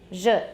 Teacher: All you do is take the voiceless counterpart of this sound, which is sh, and add voicing. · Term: voiced